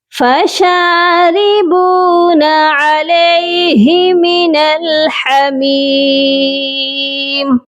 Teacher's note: فَشَارِبُونَ شین کو ایک الف کی مقدار لمبا کریں گے اور را کے نیچے زیر ہے اسی لیے را کو باریک پڑھا جائے گا.